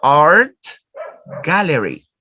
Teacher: Notice, we are going to change the pronunciation of the sound ta. The sound ta is changed. And the sound ta now is pronounced like k.